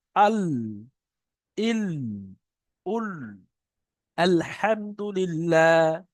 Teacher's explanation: জিভের আগার কিনারা এবং সামনের উপরের দুই পাশের দাঁতের গোড়ার সাথে লাগিয়ে উচ্চারিত হয় লাম। এখানে ছিল জিভের কিনারা এবং তার বারাবার উপরে মাড়ির দাঁতের সাথে, এখানে জিভের কিনারা এবং সামনের উপরের দুই পাশের দাঁত, প্রথমে আমাদের দুটো দাঁত আছে, তারপরে সাইডের দাঁতের উপরে মাড়ির গোড়ার সাথে লাগে লাম। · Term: লামের মাখরাজ